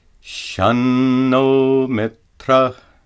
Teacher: the anuswara is pronounced as a dental na.